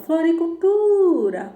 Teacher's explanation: O tu, eu sei que é a sílaba tônica. E todas as outras serão átonas.